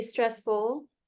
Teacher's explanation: I don't hear the L